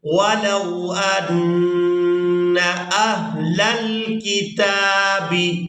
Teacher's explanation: تا کو کھڑی زبر کی وجہ سے کھینچ کر ادا کیا جائے گا، تا کھڑی زبر تا۔